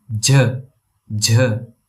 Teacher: A J with a puff of air.